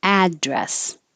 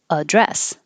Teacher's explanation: if this is a noun the stress will be on the first syllable address if it's a verb the stress is on the second syllable